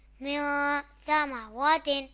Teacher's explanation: یہاں نون ساکن کے بعد حروف اخفا میں سے ثا آ رہا ہے تو یہاں اخفا ہوگا، یعنی غنہ کریں گے۔